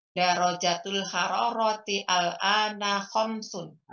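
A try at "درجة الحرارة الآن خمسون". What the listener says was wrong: Digabung aja al-annya. Jadi darajatul hararatil ana khamsun.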